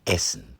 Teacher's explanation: One key feature of northern pronunciation is the near complete absence of the schwa, that weak mumbled vowel sound common in English, French, and southern German.